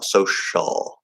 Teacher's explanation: at the end of social, okay, that's supposed to be the dark L, or what I call the half L vowel sound. You could fully enunciate it as a full L, like a regular L, social.